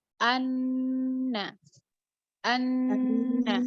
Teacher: di bagian anna, nunnya tasydid. Maka dia ada gunnah. Gunnah itu panjangnya 2.